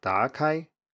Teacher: So let's say, for example, that you're struggling with a word like 打开, which means to open, and you say something like 打开. You have a rising tone at the beginning instead of a low tone, as the third tone should be pronounced here.